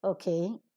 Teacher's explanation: Okay. Would mean when you are falling down, it would mean that you are listening to somebody and you are agreeing with him and following him.